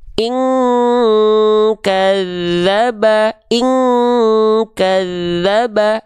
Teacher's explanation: nun sukun ketemu huruf Kaf ini baru dibacanya Eng mendekati Eng · bunyi dengungan yang kuat sehingga keluarnya Eng Kenapa karena suanya masuk semua ke dalam rongga hidung cara ngecek Apakah dia sudah Eng atau belum buka tutup hidung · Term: dengungan Eng